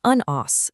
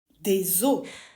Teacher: it's the S sound you hear in un os that goes silent when you say des os